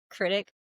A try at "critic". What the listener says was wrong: Yeah, you put a T at the end of critic. It's critic.